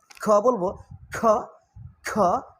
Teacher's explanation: খ সাউন্ড পড়লে একটু বাতাস বের হচ্ছে